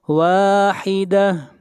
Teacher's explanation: واحدہ، یہاں پر تنوین کے بعد واو ہے اس لیے ادغام مع الغنہ کریں گے، واحدہ، اور آخر میں یہاں پر گول تا ہے، جب یہاں پر سٹاپ کرتے ہیں گول تا کے اوپر تو گول تا ہا بن جاتی ہے۔